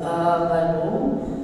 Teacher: ada hamzah kemudian sesudahnya ada alif ya mad badal dipanjangkan dua harakat